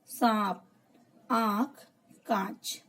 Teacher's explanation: चंद्रबिंदु अनुनासिक कहा जाता है। इसका उच्चारण करते समय हवा मुख और नाक दोनों से निकलती है